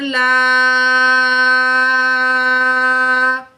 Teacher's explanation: یہ بڑی مد ہے، تقریباً 5 کاؤنٹ کھینچ کے پڑھیں گے یا 5 سیکنڈ کھینچ کے پڑھیں گے، ٹھیک ہے۔